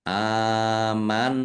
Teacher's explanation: Nun tasdid dibaca ghunah atau mendengung ditahan biar tampak dengung